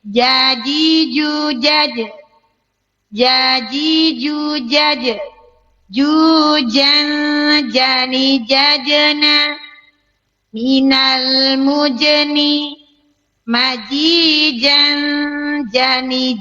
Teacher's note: Huruf jim tidak boleh ada tambahan ch.